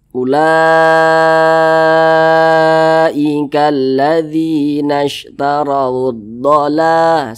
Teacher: alif lam syamsiyah itu biasa disebut juga dengan Idgham Syamsiyah hm Jadi huruf lamnya ini dia tidak dibaca jadi jangan bingung di sini kan huruf lamnya tidak ada tanda